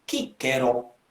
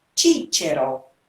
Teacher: Então o C passa a ter uma pronúncia de africada. Então, Cícero.